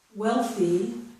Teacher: The TH remains the voiceless TH sound. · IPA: /θ/